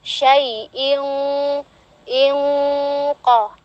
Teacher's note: ini dia huruf isti'la di depannya qaf, jadi ditebalkan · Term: gunnahnya itu ditebalkan